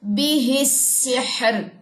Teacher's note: یعنی کہ دو خالی لیٹرز ہونے کے بعد زیر ہے تو بھی را باریک ہی پڑی جائے گی. جیسے یہاں پہ دیکھیے، یہاں پہ را خالی ہے، اس کے بعد ہا بھی خالی ہے، پھر اس کے بعد سین کے پاس زیر آتی ہے جی.